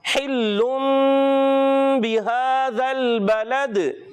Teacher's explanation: یہ تنوین کو میم سے بدل کر ادا کرتے ہیں اور غنہ کر کے ادا کرتے ہیں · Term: اقلاب